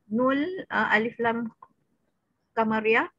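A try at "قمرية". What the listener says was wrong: Qa bukan kama qamariyah. Kan kama, qama. Qamariyah sebenarnya.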